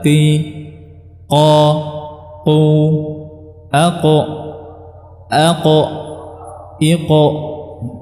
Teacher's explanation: Padahal makhrajnya huruf qaf bukan di tenggorokan tapi di pangkal lidah.